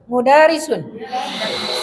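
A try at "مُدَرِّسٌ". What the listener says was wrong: Guru apa? Ya, tasydidkan. Mudarrisun.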